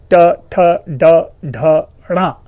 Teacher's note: जितने भी टवर्गीय ध्वनियां हैं, ट, ठ, ड, ढ, ण, इनका उच्चारण इस मूर्धा से होता है। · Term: मूर्धन्य